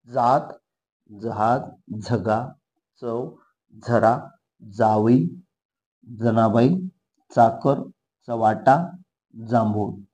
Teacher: दात आणि टाळू दोघांच्या मध्ये आपली जीभ लागते तालव्य म्हणजे काय पहा तालव्य पाहू आपण टाळू लागणार फक्त टाळू · जात, जहाज, झगा, चव, झरा, जावई, जनाबाई, चाकर, चवाटा, जांभूळ हे सर्व शब्द उच्चारत असताना जे स्टार्टचे आहेत ज, ज, झ, च, झ हे सगळे ज, च, ज हे दंत तालव्य. दात आणि टाळू दोघांच्या मध्ये आपली जीभ लागते.